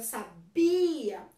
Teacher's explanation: Por exemplo, sabia, eu sabia que você queria aprender acentuação. Então, quando eu falo a palavra sabia, o bi é mais forte